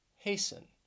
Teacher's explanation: All of them have 2 syllables, and the stress is on the first syllable.